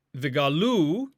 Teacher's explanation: Vigalu, here again we have a vikatal form with the stress shifted to the end. It is milra stress, or stress on the ultima, the final syllable, third masculine plural call.